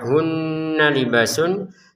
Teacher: Nun bertasydid dibaca dengungan 2 harokat